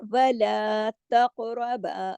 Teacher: تقربا قاف موٹا ہے اور قاف پہ کلکلا بھی ہوگا